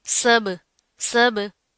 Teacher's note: बा के ऊपर साकिन आ रहा है, तो हम यहाँ पर क्या करेंगे, कलकला करेंगे।